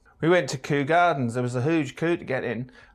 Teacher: In East Anglia, yods are dropped after every consonant.